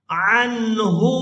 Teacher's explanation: ہا کو الٹا پیش کی وجہ سے کھینچ کر ادا کریں گے